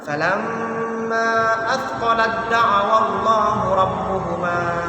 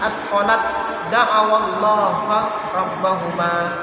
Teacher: Selanjutnya falamma athqalat da'awallaha rabbahuma athqalat da'awallah. Tak mati bertemu dengan dal, maka langsung saja dalnya itu ditasydid dalam bacaan.